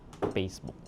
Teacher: Um, oo sounds, oo sounds become u, Facebook becomes Facebook. So, again, we don't have an f, so it becomes p